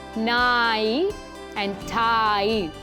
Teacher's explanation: although there's just one vowel it's got two sounds to it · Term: diphthong sound